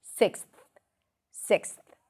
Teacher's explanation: You say the word six, then you stick the tongue out for a t and then release it to a th